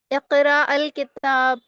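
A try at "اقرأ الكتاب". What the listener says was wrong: नहीं, जब मिला के पढ़ते हैं तो अलिफ नहीं पढ़ा जाता है।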